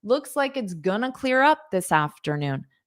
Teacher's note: notice how I pronounce going to as gonna